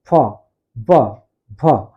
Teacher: दोनों होंठ जुड़ रहा है